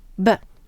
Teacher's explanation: if you place your hand on your throat you'll notice that when you say p there's no vibration but when you say B you're vibrating your voice box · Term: voiced and unvoiced pair